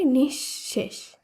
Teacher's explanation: শব্দটি শুদ্ধ উচ্চারণ হবে নিঃশেষ কারণ বিসর্গের পরে এখানে তালব্যস আছে তাই তালব্যস বর্ণটি দুবার উচ্চারিত হবে